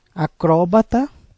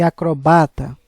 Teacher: a diferença está na acentuação na tonalização de cada uma delas acróbata proparoxítona e acrobata que é paroxítona